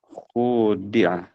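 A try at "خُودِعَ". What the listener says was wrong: Dipanjangkan ya. Khudi'ah.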